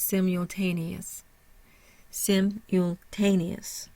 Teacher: Simultaneous. So we start with the primary stress in the third syllable, ta. Sim has a secondary stress, so it's strong, but not as strong as the ta in simultaneous.